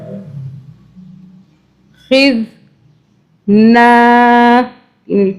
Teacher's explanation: زال کو سافٹلی ادا کرنا ہے زا سیٹی والا نہیں پڑھنا